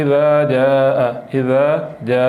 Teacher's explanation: ذال کو نرم کر کے پڑھتے ہیں، اس کو پڑھتے ہوئے ایک تو سیٹی کی آواز نہیں نکلنی اور دوسرا زور نہیں لگانا